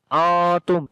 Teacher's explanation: تو یہاں پر میں بتا رہا ہوں کہ یہاں پر اخفا ہوتا ہے, آواز یعنی کہ ناک میں نون کی آواز کو چھپائیں گے اور 1 سیکنڈ لمبا کرتے ہیں